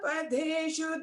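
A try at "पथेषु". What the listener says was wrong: Last line kada patheshu, not padeshu. Pathe, tha, second tha.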